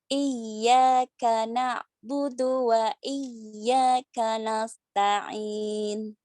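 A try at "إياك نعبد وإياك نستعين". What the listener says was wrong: Ya, karena sinnya diperjelas huruf S-nya ya. S itu dia mempunyai sifat sofir ya, jadi harus kedengaran nas ya, gitu. Kanas SS biasa.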